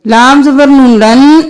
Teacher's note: اس نون کو چھوڑ کر لام زبر نون لن اس نون کے ساتھ ملائیں گے اور تشدید ہے غنہ بھی کریں گے